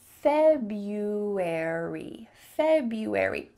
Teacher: That R is just gone. Just cut it out completely. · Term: silent R